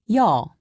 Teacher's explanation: Imagine that you are trying to say e and o very fast. Be sure not to pause in between pronouncing the two sounds.